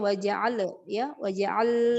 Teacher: Sisa lam sukunnya nanti dibersihkan, jangan tawallud ya.